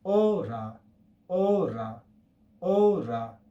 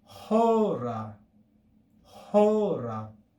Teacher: instead of saying ora, we're going to say hora with aspiration before the omega